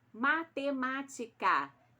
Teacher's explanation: e ela tem um acento agudo no mar Isso significa que a sílaba tônica é a sílaba mais forte de matemática está no má